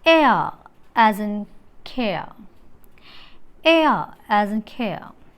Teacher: The articulation during the production of the diphthong air, the glide movement of the tongue begins in front half open position